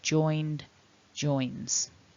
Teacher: we need to be voicing those endings